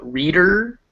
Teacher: that last syllable er that's a schwa before an r